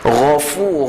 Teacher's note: Gha huruf yang keluar daripada halkum yang paling atas, halkum kita yang paling atas. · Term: gha tebal